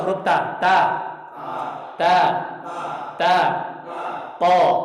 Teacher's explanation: Nah, seperti kayak huruf ta, cuman pangkalnya naik.